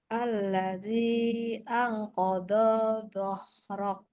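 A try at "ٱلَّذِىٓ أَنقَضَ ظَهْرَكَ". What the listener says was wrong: Tapi nggak ada yang panjang kodo. Kodo zohrok. Yang satu lidahnya di luar. Kodo zo. Yang zo di luar. Kodo zohrok.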